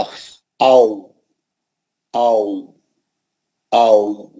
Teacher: होठों का गोल होना और बाहर की तरफ निकाल के होठों को सामने लेना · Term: वाव का मखरज